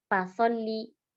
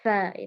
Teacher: harus sambil disertai dengan hembusan nafas yang banyak ya. Fa, maka itulah cirinya ketika kita tidak mengalirkan nafas itu maka nggak akan keluar ya. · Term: huruf fa